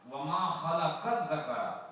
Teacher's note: لام جو ہے مدغم ہے زال کے اندر، بالکل گم ہے اس کے اندر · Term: ادغام